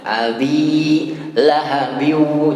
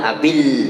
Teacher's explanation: bi-nya dipanjangkan dan tidak boleh ditambahkan dengan tasydid. Ya, abi lahabiu, jangan abil.